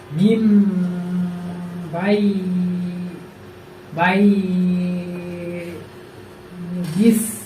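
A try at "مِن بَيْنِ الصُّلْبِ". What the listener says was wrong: ওই যে তুমি কিন্তু এমনি পড়া সঠিক আছে, কিন্তু দেখা যায় যেখানে মাদ দেয় সেখানে তোমার একটু মাদ হয়ে যাচ্ছে, ঠিক আছে, যেখানে মাদ দেয় সেখানে মাদ করা যাবে না। মিম বাইনিস সুলবি, মিম বাইনিস সুলবি।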